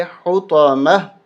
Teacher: یہاں پر بھی گول تا اور یہاں پر بھی گول تا. یہاں پر ہم وقف کی صورت میں ہا کر دیں گے